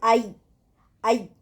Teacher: یا بیچ زبان کے بیچ والے حصے کو اوپر کے تالو کے ساتھ لگانے سے نکلتا ہے